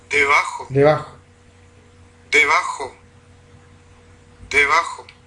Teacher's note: Vamos a ver aquí entonces la configuración espectrográfica de la bilabial sonora, fricativa para algunos, aproximante para otros